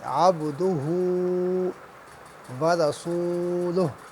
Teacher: با جو ہے حروف قلقلہ میں سے ہے، لہٰذا یہاں پہ قلقلہ ہوگا، با کی آواز دوبارہ سے آئے گی